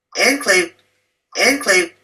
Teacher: The first word is that he says enclave with a long syllable on the second syllable. And in English, we stress that on the first syllable, either using the French enclave or the English enclave, both of which are acceptable pronunciations.